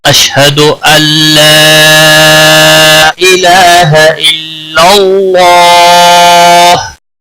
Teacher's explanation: حد اللہ، نون ساکن یہاں پر حذف ہو جائے گا، حمزہ لام کے ساتھ ملے گا سیدھا۔ اللہ مد منفصل ہے، 3 الف کے برابر کھینچ کر پڑھیں گے